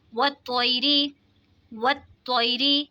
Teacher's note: या साकिन से पहले ज़बर है तो या लीन होगा, या लीन को खींचते नहीं है बल्कि नरमी से अदा किया जाता है। · यहाँ पे रा के नीचे ज़ेर है तो रा को बारीक पढ़ेंगे।